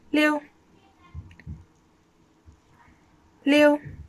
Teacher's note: that is fourth tone again going down